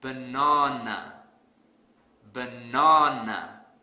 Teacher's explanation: I will stress the second syllable really hard